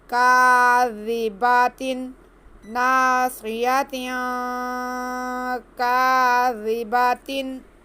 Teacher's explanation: जाल को बहुत नरमी से, बिल्कुल भी सीटी की आवाज़ नहीं आए।